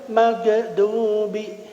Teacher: Karena memang ya ghin yaitu di antara huruf halqiyah bagian adnal halq ujung tenggorokan ya sama dengan kha. Dan dia tidak boleh mantul ketika disukunkan. Sifatnya isti'la, gha ya dan juga rakhawah ya.